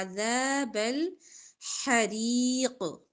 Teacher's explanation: ذال نرمی سے باریک اور زبر کے ساتھ الف ہے لمبا